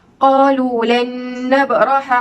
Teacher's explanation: Cara bacaannya dengan memasukkan hukum nun mati atau tanwin ke dalam salah satu huruf idgham bi ghunnah dengan dengung 2 harakat. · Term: idgham ma'al ghunnah